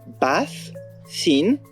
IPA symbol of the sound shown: θ